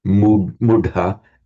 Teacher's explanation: the h plus the t merge into a dh, mudha, and the u lengthens. So it's slightly irregular.